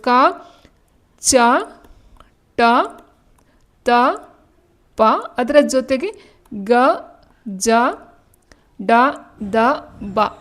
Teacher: ಅಲ್ಪಪ್ರಾಣ ಅಂತ ಹೇಳಿದಾಗ ಯಾವುದು ಬರುತ್ತೆ ಕಡಿಮೆ ಉಸುರಿಂದ ಉಚ್ಚಾರಣೆಯನ್ನ ಮಾಡ್ತಕ್ಕಂತದ್ದು